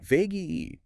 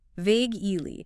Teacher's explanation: Two syllables. Stress on the first.